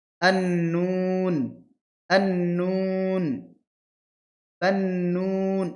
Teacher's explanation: জিহ্বার আগাটা উপরে তালুতে ঠেকছে গিয়ে। · তারপরে নুন, নুনটা হবে জিহ্বার আগা এবং সামনের উপরে তালুতে ঠেকবে।